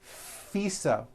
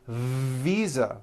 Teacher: fisa with an unvoiced f i should have said visa with a voiced v